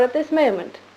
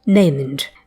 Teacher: Moment, the older goat vowel again.